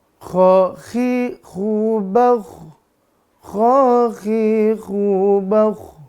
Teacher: untuk ko dan gho makhrajnya ditenggorokkan atas tidak boleh bergeser ke bawah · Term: tenggorokan atas